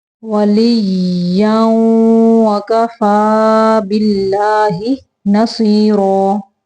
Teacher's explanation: اللہ کا نام باریک پڑھیں گے